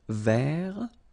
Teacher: So masculine form, you don't pronounce the final T.